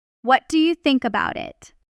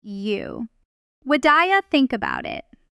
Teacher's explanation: The words what and do and you blur together into one quick sound. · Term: connected speech